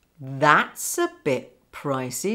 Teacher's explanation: Notice the link between s and a.